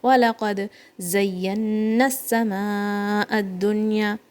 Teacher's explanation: Dal has a bouncy sound when there is no haraka on it. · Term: qalqala